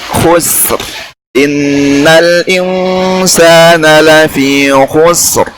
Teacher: Ya, meskipun sinnya tipis tapi ra-nya tebal.